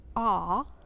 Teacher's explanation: that is more of the short o sound and your mouth is just a little bit more oval